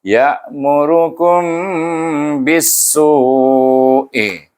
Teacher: Iaitu kerana dia ikhfa. Huruf mim mati bertemu dengan huruf ba, kita baca dengan ikhfa syafawi